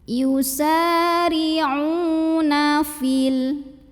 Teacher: Maka huruf yang baris dhammah ain panjangkan 2 harokat saja. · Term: mad tabi'i